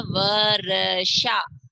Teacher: र बीच में आएगा और य बाद में आएगा। जो र की ध्वनि है वो आधी आएगी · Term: आधा र